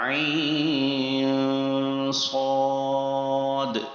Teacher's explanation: عین جو ہے وہاں پر نون ساکن ہے، اور یہ نون ساکن کے بعد صاد آ رہا ہے، تو اخفا کا ساؤنڈ آئے گا